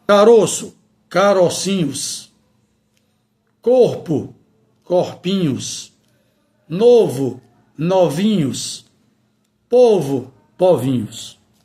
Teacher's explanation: Temos aqui exatamente mais uma regra referente ao plural metafônico que mantém a vogal aberta mesmo que a palavra esteja no diminutivo